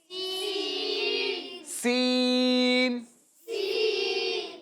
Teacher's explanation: تو دیکھیں سین کی جو ادائیگی ہے، سین، اس میں سیٹی کی سی آواز آتی ہے. سین بولیں، سین، یعنی آپ کے دونوں دانت بند ہوں گے، ٹھیک ہے، اور آپ کی زبان ان کے بالکل بیچ میں لگے گی.